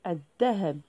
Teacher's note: لاحظوا هناك التعريف ال، ولكن لام لا تنطق، نقول الذهب. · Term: الشمسية